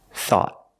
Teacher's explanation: At the end, the tongue goes up and makes a stop T.